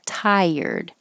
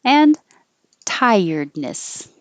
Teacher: Tired. Tie, your tongue rises and then it slides down for the R